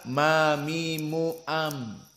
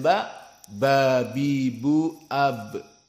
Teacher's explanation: Maka mim coba kita makhrajnya baca ma mimu am, dan ba bi bu ab, sama-sama dari makhraj syafah. Namun mim lebih ringan intibaknya, penekanannya, presetnya daripada ba.